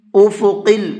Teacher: قاف کو منہ بھر کے پڑھنا ہے